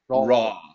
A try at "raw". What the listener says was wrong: right now I'm hearing you say row. I don't want row. I want raw. Do you remember the AW sound?